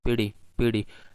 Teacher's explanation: single tap against the alveolar Ridge in the middle of the world such as beauty beauty and